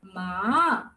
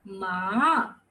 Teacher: The second tone is a rising tone. That means ma. You're taking it up.